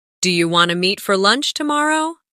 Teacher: In casual speech, do you want to often sounds like do you wanna?